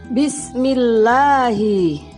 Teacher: Lam jalalah dibaca tipis ketika didahului harokat kasroh. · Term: tarkik atau tipis